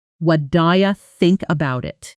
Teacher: what do you often collapses into something closer to wa, daya, and about it connects into about it.